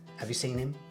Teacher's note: they miss H's off the start of the words